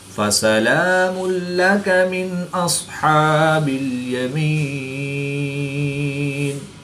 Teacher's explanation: دو پیش کی تنوین کے بعد لام حروف یرملون میں سے ہے تو یہاں پر ادغام بلا غنہ ہوگا، یعنی غنہ نہیں کریں گے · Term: اظہار